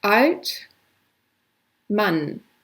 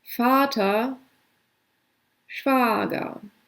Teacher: German A sounds like English father and has a shorter and a longer version.